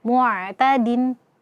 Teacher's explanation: Ain ini punya sifat tawassut ya, sedikit dialirkan suara. Jadi jangan sampai kita syiddahkan, kita tahan suara saat membacakan ain ketika dia sukun. · Jadi jangan sampai kita syiddahkan, kita tahan suara saat membacakan ain ketika dia sukun. Jangan dibaca mu, kullu mu'tadin, tidak ya, alirkan sedikit suaranya.